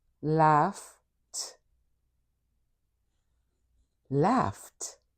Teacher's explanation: So when you listen to this word, the last sound you hear is f, which means this word in its past tense, the ed is going to sound like t